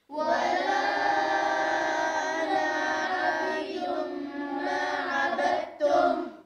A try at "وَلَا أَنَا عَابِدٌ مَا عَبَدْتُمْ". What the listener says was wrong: شوف، مش ولا أنا عابد، لا، ولا أنا، خطف هذه الألف في حال الوصل لا تلفظ، تمام، وكأنها حركة وكأنها فتحة، في حال الوقف تلفظ. ولا أنا عابد ما عبدتم.